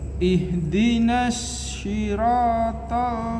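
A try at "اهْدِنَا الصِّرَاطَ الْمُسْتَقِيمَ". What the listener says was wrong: barusan malah ke shin. Ihdinas swi. Swat itu tebal. Swi. Bibirnya enggak gerak. Ihdinas swi. Sirata. Nah, itu tadi malah ke shin. nafas itu bertebaran di dalam mulut. Itu tafashi namanya. Itu khusus untuk shin. Tapi kalau shot tidak ada. Lidahnya kurang terangkat. Swi. Ya, memang buru-buru isti'la itu tadi yang memang agak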